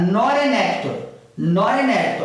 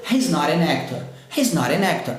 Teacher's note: Então, esse T vira R porque ele está entre duas vogais e esse N emenda com a vogal que vem depois